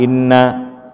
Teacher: Nah, yang pertama inna itu ada wajibul gunnah di sini. Kita berjumpa dengan nun yang sukun, namanya wajibul gunnah. Maka kita baca lama di situ gunnahnya. Nah, jadi jangan kita baca cepat.